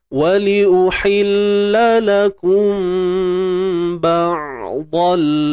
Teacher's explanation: Huruf Ain pastikan kita matikan dia dan suara kita jangan bagi tersekat ataupun tertahan.